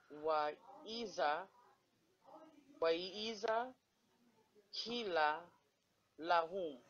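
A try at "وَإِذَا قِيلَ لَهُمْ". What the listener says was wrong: Correct.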